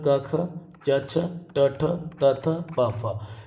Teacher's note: तो 10 व्यंजन है ये अघोष है